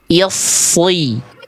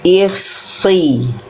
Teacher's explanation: Pangkal lidah huruf shotnya naik sejak awal. Jangan hanya pada saat berharokat, tapi ketika i lalu masuk ke es, nah itu udah langsung naik pangkal lidahnya.